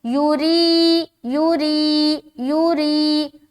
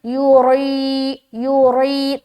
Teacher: यहाँ पर देखिए या साकिन और उससे पहले जेर है तो या मद्दा का कायदा करना है, यानी कि एक अलिफ खींचना है, लेकिन खींचते हुए आपको रा बारीक रखनी होगी